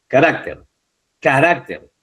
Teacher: Carácter también termina en R. Y la sílaba tónica es la penúltima.